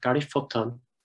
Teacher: under the influence of stress shift, which I think was a feature of Irish in this area, Patton has changed to Putton.